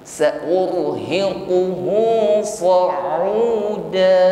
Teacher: Ra sukun ya, sebelumnya ada dhammah, maka ra-nya di sini tafkhim ya, sifatnya takrir ya, irti'adu tarful lisan, harus ada getaran ya saat mengucapkan ra sukun. Getarannya tebal. Sa'urhiquhu sa'uda.